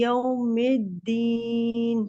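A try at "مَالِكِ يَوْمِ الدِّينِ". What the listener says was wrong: यौमिद्दीन। फिर आपकी मी में प्रॉब्लम है, वही जो बा में थी। मिद्दीन, मी मिद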